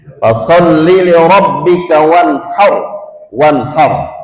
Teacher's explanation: harus ra dibaca tafkhim